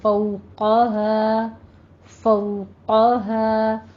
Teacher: فو میں واولین ہے، دونوں ہونٹوں کو ناتمام گول کیجئے اور قوف کو پر پڑھنا ہے